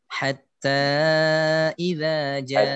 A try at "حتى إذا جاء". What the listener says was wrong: افتح الفم أكثر حتى تكون الألف مفتوحة.